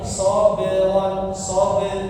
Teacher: jangan terlalu ditekan, jangan sabron sampai bunyinya terputus ya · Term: huruf-huruf qalqalah